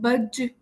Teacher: با ایک ایسا ورڈ ہے کہ جسے ہمیں جب ہم اس پہ اینڈ کرتے ہیں، جیسے یہاں پر ہمارے پاس اگزامپل بھی دی ہے، جیم بج، ٹھیک ہے، ہم جب جیم پہ کوئی جزم دیں گے تو ہمیں اسے بھی تھوڑا سا ہلانا ہوگا، حرکت دینی ہوگی تاکہ ہمیں محسوس ہو کہ ہم نے جیم ادا کیا ہے، یا پھر دال۔ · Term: قطب جد کے حروف